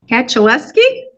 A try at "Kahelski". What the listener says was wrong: Kahelski. Kahelski. The C is silent.